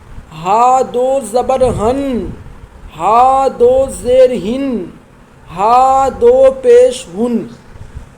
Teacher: حلق کے جو شروعاتی حصہ ہوتا ہے، شروع حلق سے حمزہ اور ہا، چھوٹا ہا جو ہوتا ہے یہ حلق کی شروعات سے ادا ہوتا ہے